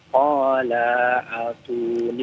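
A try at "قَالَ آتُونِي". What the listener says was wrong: Qala atuni. Panjang 2 harokat. A-nya panjang. Qala atuni.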